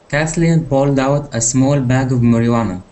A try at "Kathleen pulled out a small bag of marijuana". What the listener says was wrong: there you go that's it nice